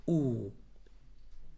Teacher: diese U kommt durch die Lippen, wenn du die Lippen einen Kreis machst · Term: Wow